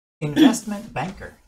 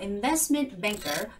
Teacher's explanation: 중간에 T는 거의 소리도 안 나요.